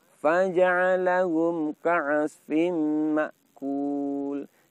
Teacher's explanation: Cukup kita baca faja'alahum ka'asfim ma'kul. Jadi mim sukun pada lafaz faja'alahum dengungnya pendek singkat saja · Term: idhar syafawi